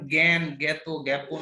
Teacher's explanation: আ বর্ণের উচ্চারণ এ এর মতো উচ্চারণ, যেমন জ্ঞান, জ্ঞাত, জ্ঞাপন ইত্যাদি।